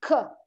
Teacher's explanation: if you are saying k, air is blocked and then released